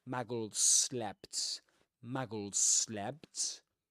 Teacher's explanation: that one long s sound in between muggles and slept.